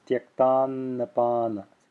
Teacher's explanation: See how I'm extending that first n just a little bit, and it's voiced, so you hear it as I extend it.